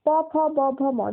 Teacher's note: দেখো তোমাদের যে দুটো ঠোঁট রয়েছে, ঠোঁট দুটো জোড়া লাগছে এগুলো উচ্চারণের সময়। প, দেখো ঠোঁট দুটো জোড়া লাগছে আবার খুলে যাচ্ছে, এরকম ভাবে সবগুলোতেই তাই হবে। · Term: ওষ্ঠ বর্ণ